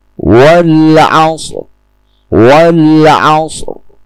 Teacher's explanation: ro sukun dibaca dengan tafkhim